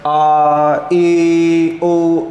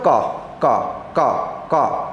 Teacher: सघोष में झंझनाहट सी हो रही है